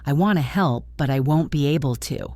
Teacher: The sound for won't is a diphthong, a double sound like the O in go.